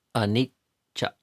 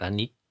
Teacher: notice the tongue and how air is temporarily held back. And then cha. The next syllable releases out. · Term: double consonants